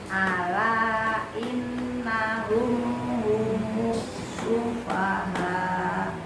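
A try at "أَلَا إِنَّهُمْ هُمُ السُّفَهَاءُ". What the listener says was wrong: Pendek. U-nya jangan U. Nah, itu manjang jadinya. Humus. Nah, itu manjang.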